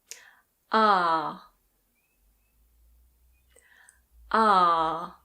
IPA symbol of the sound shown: ɑː